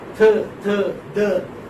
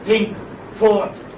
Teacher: So here in dental you have teeth and tongue. The tip of the tongue touches the upper teeth.